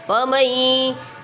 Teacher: فمئی پہ دیکھا نون ساکن کے بعد یا آ رہا ہے تو ادغام ہو رہا ہے